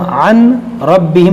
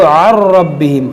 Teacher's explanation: یہاں پر دیکھیں نون ساکن کے بعد را ہے، یہاں پر ہوگا ادغام بغیر گنہ کے. اس کو ہم عن ربہم نہیں پڑھیں گے بلکہ اس کو عر ربہم، عر عین نون را زبر عر، اس کو عن نہیں پڑھیں گے بلکہ عر ربہم.